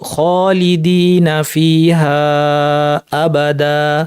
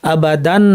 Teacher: তানবিনের পরিবর্তে এক আলিফ টেনে আমরা থামলাম আবাদা বলে আমরা থামলাম।